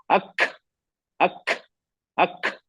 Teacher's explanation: मैंने ना के बराबर लगाया, बिल्कुल बिल्कुल हवा में छुआ, आवाज हवा में, इससे कमजोर हो जाता है। ज्यादा हवा छोड़कर काफ को फूंक की तरह अदा करना, ये भी गलत है।